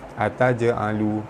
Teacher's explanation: jim mati di tengah kalimah, hukumnya qalqalah sugra, lantunannya tidak kuat